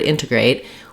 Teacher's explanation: in the first word integrate, we will be stressing on that first syllable. So my in syllable is long and has a clear vowel.